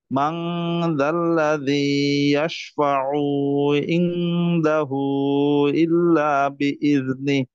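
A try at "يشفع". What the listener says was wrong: ইয়াশফাউতে টান হবে না। আবার বলেন।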